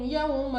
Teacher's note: واو ساکن سے پہلے زبر واو لین، بغیر کھینچے بغیر جھٹکا دیا پڑھیں گے